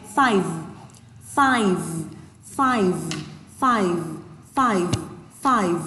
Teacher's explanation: Âm cuối là âm vờ, các bạn đây là âm hữu thanh ạ. Vậy khi các bạn nói các bạn sẽ thấy là mồm mình sẽ hơi rung một chút ở đây ạ, hơi rung một chút ở khu vực lưỡi.